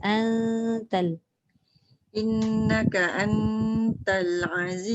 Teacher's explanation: nun bertemu ta ni dia tak boleh lekat lidah dekat langit. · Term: ikhfa